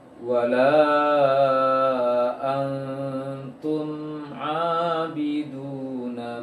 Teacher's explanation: tahan sejenak saja ataupun sedikit untuk mimnya, dihadirkan sedikit suaranya, baru baca ainnya